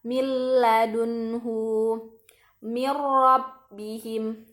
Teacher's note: Nah, bedanya bila gunnah ini gak ada dengung ya teman-teman. · Kemudian pada waktu mengidghamkan, suara harus ditasydidkan pada huruf lam juga ro. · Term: idgham bila gunnah